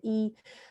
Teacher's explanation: the tongue is pushed up and to the front, leaving only a small channel for air to pass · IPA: /i/